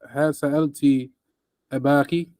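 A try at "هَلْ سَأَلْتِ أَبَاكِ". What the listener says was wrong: Now, read that lamb clear. Don't say has, but you go from the lamb and the scene together. Halsa. Push your tongue up on the lamb, then bring it down to the, but go all the way up on the lamb. Take your time. Halsa.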